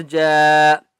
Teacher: جیم کو ایک الف کی مقدار کھینچ کر پڑھیں گے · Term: مدہ